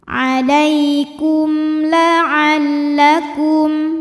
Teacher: Alaikum la'allakum kum ada hukum idzhar syafawi. Karena mim sukun menghadapi huruf selain mim dan ba, yaitu huruf ta. Maka mim sukun dibunyikan dengan jelas.